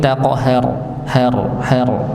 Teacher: ra-nya dipantulkan, ditebalkan, qafnya dipantulkan.